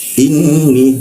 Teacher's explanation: nun bertasdid di atas nun ada tasdidnya kita tahan dua ketukan